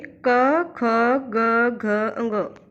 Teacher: क वर्ग का उच्चारण स्थान कंठ है, इसलिए इन्हें कंठ्य ध्वनि कहा जाता है।